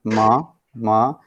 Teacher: So nasal as well as mouth. The air is coming out from both the passages. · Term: Nasal sounds